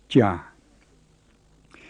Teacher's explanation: The plain j is not like the aspirated sound we write ch in the English word cha, and it's not like the j in English ja. It's halfway between the two.